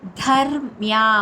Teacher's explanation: ధ మహాప్రాణాక్షరం ధ stress ఇచ్చి పలకాలి. ధర్మ్యా మా ప్లస్ యా మ్యా ధర్మ్యా మృతమిదై దా తర్వాత అనుస్వర ఉచ్చారణ అక్కడ యా కింద పలుకుతాం.